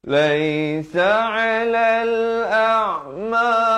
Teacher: di sini ain di pertengahan kerongkong. Laisa 'alal a'ma haraju masuk beserta dengan 2 harakat.